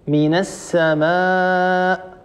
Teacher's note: الالف هنا سبق بميم والميم حرف مرقق حرف مستفل وبالتالي لا يصح ان نقول من السماء لا يصح مثلا قل